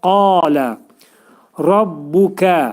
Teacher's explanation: Ra hərfi təxvim oxunacaq, dolu oxunacaq